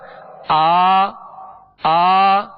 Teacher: اسی طرح جب ہم کھڑی حرکات کو پڑھیں گے، زبر کو ادا کریں گے، تو وہی طریقہ ہوگا جو ایک زبر ادا کرتے ہوئے ہم نے آواز اور منہ کھولا تھا، اس کی ادائیگی کا طریقہ یہ ہوگا، لیکن دراز کریں گے کھڑی حرکات کو، جیسے حمزہ کھڑا زبر آ، ایک الف کے برابر ہم نے کھینچا، مگر آواز اور منہ کھولیں گے